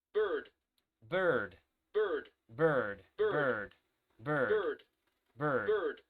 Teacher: Es como una letra E, pero una letra E pronunciada como muy adentro de tu boca. No es una letra E que se pronuncia aquí en los labios.